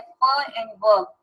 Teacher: तो lower lip जब अपर teeth के साथ मिलेगा जैसे फ एंड व, तो उसको हम कहेंगे that is your labio dental.